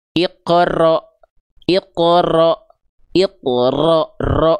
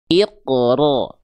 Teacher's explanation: Arti takrir itu dia bergetar, tapi karakter getaran pada huruf ro-nya itu bukan getaran yang berlebihan. Contoh, iqra, ro, nggak begitu.